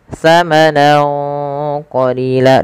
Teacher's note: samarkan suara nunnya kepada huruf qaf awalnya samanan, karena bertemu qaf samanan qalila, dan ditahan dengungannya sepanjang 2 harokat. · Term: ikhfa